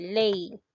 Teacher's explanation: primero se presenta la vocal abierta y después la vocal cerrada como es el caso de ley ya en esta en este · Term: decreciente